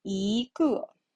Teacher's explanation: It should be the rising tone 一.